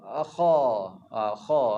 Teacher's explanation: Kha ni sebenarnya telah berada di awal pangkal lidah tapi tak masuk lidah. Dia di hujung kerongkong.